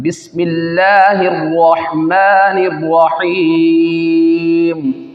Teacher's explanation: बिस्मिल्लाह में अल्लाह तबारक व तआला के लाम को बारीक पढ़ेंगे, क्योंकि अल्लाह अज़्ज़ व जल के लाम से पहले ज़ेर आ रहा है, उसको बारीक पढ़ेंगे।